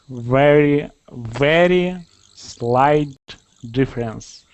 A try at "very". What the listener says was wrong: So you can hear your tongue. It's really good at, now it doesn't roll as much as it used to, let's say 2 weeks ago even. So it's getting much better. But now it's doing this little flick thing with itself. It's going very, very, very.